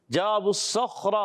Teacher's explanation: جیم الف زبر جا، الف مدہ ایک الف کھینچنا ہے